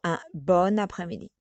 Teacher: you will use the liaison for the N from bon, and you will use it like if it was attached to the N, because you have the consonant, the N, and you have the E, the vowel E from après-midi.